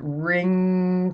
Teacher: especially the ing, as in ring, comes right up in these nasal cavities.